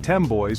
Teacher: the /n/ sound assimilates to the /m/ sound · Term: assimilation